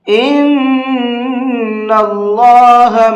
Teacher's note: یہ پورا لفظ اللہ ہے اور اس اللہ کے لام کو منہ بھر کے پڑھیں گے، اس لیے کہ اللہ کے لام سے پہلے زبر ہے